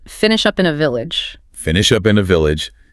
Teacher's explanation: the linking between up and in was so intense, so seamless